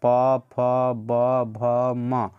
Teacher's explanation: इस सभी में क्या है तो मेनली ओष्ठ का उच्चारण होता है